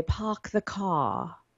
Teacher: we don't have post vocalic R so you might say park the car in British English